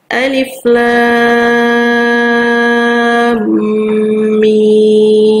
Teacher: Alif tadi sudah kita pahami bersama di awal bahwa dia tidak berlaku hukum mad, sehingga dibaca sesuai dengan hurufnya alif tanpa perlu memanjangkan. Sementara lam di sini ada huruf mad bertemu dengan sukun dan kita panjangkan dengan 6 harokat. Kemudian ada mim sukun lagi bertemu dengan huruf mim yang bertasdid, sehingga terjadi idgham mislain, sehingga kita panjangkan dengan kadar panjang 6 harokat ya.